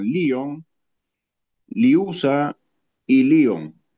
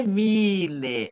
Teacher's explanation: o som de Y em grego é um U arredondado, não é I estirado, é um I com os lábios arredondados